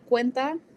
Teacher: the QE is gonna sound like a KW